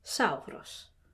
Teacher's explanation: And it makes a s sound, a retracted S sound. Kind of halfway between s and sh is s. · Kind of halfway between s and sh is s. It's retracted slightly halfway between S and SH.